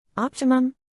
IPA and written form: ˈɑːp.tɪ.məm (Optimum)